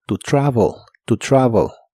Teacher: La e de travel es muy suave y suena casi como o.